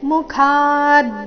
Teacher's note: ಮುಖ ನಲ್ಲಿ ಖ ಮಹಾಪ್ರಾಣ ದೀರ್ಘ ಬಂದ ನಂತರ ಅದರ ಮೇಲೆ ಆಘಾತ